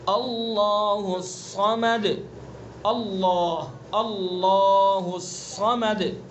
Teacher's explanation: صاد کو پر پڑھیں گے اور دال کے اندر قلقلہ کریں گے